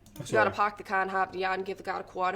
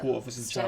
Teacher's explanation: Any ER would have an AH at the end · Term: Standard Boston accent